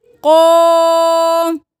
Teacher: قاف کے اوپر کھڑی زبر ہے تو کھینچیں گے, قاف موٹا پڑھیں گے